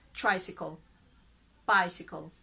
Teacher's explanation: for the British, there's a schwa in between because there is a sound not directly KL